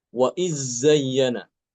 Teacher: Waid zayyana dalnya diidgamkan ke zai